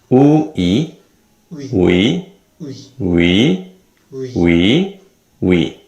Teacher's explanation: this vowel is made up of the 2 basic vowels u and e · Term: W glide